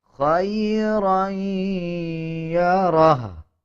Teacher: ہا کے اوپر جو الٹا پیش ہے اس کو سائلنٹ کر دیا جائے گا اور ہا کی آواز کو آدھا پڑھا جائے گا